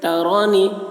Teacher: نون میں اخفا، یعنی نون کی آواز کو ناک میں لے جا کر چھپائیں گے